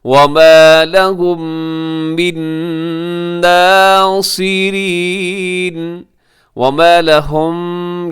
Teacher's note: یہاں میم ساکن کے بعد میم ہے، یہاں ہوگا ادغام شفوی